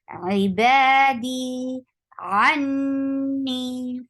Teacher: D 2 counts long. Ibadi anni for ain should be from your throat. Attached with noon, it will get gunna, and this gunna is akmal, so the sound the gunna should be longer.